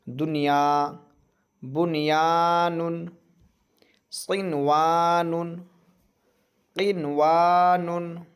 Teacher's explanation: इसलिए इन चारों कलिमात में गुन्ना ना करें, इसमें गुन्ना नहीं करना है, बल्कि एकदम ज़ाहिर करके नून को पूरी तरीक़े से ज़ाहिर करना पड़ेगा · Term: इज़हार मुतलक़